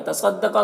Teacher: साद को पुर पढ़ेंगे, कौफ को पुर पढ़ेंगे